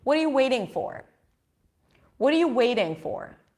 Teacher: waiting is the one word that really sticks out here · Waiting is the verb. That's the word that is going to be higher in pitch.